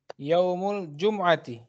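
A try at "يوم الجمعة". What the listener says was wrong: Jumu'ati. Jadi bukan Jumat ya, tapi Jumu'ah.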